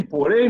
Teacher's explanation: o M não vem só para nasalizar o E, ele tem som de Y